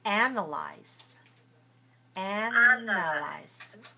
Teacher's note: stressed on the first syllable so the first syllable has to be clear